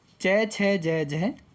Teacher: च वर्ग वाले तालु से आवाज़ देता है